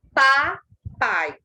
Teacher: O A e o I são 2 sons vocálicos na mesma sílaba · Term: encontro vocálico